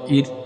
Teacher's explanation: اگر را ساکن سے پہلے زیر ہو تو اس را کو باریک پڑھیں گے، پتلا پڑھیں گے